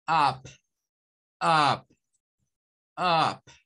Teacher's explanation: Comenzamos como queriendo sacar una A que termina siendo una U.